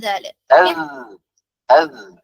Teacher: നാവിന്റെ back side ഉയർത്തുന്നില്ല light letter ആണ് · ദാൽ air പുറത്തു പോകില്ല സൗണ്ട് പുറത്തേക്ക് പോകും പിന്നെ വ്യത്യാസം എന്താണ് ദാൽ നാവിന്റെ പൊസിഷൻ നോക്കിയാൽ കാണാൻ പറ്റും നാവ് ഫ്ലാറ്റ്